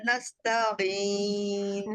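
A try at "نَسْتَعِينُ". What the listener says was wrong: نستعین. تا تا تا نستعین آپ کی ہو رہی ہے نستعین. تا تا تا نہیں ہونی چاہیے. یعنی نہ آپ تا پڑھ رہے ہیں اور نہ آپ تا پڑھ رہے ہیں. تا ہے تا.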